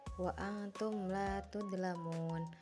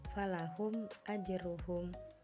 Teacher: Pengertian izhar syafawi adalah apabila huruf mim mati bertemu dengan huruf hijaiyah selain huruf mim dan ba, cara membacanya yaitu huruf mim harus dibaca jelas tanpa guna · mim mati dengan huruf selanjutnya sama-sama jelas tidak adanya guna